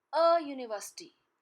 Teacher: University begins with U, which is a vowel, but the sound here is Y, which is not a sound of vowel, it's a consonant sound